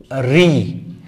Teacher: রি এর উচ্চারণ স্থান হচ্ছে মূর্ধা। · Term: মূর্ধন্য বর্ণ